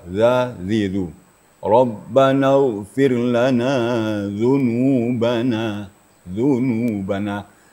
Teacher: makhraj dal itu adalah di ujung lidah dan ujung gigi atau papan gigi atas. Dipertemukan ujung ujung lidah dengan papan gigi atas ya. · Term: huruf dalal